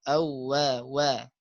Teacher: sifat hurufnya yang pertama adalah jahar, ya, tidak keluar udara ya